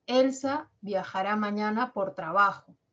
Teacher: mi intención es informar Así que mi entonación se va a caracterizar por tener un tono descendente